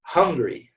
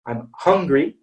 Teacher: a bit more open it's ha so it's hungry okay and the reason it's not a schwa is because this is stressed